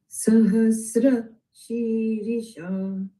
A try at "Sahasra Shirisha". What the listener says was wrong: The Sa has to go further down when you begin. Sahasra Shirisha.